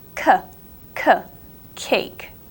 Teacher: the cake one is more from the back of your throat